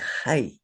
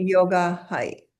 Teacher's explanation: The visarga is a breath sound, but it takes the sound of the vowel before it.